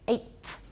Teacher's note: The T is going to be dental because it's influenced by the th.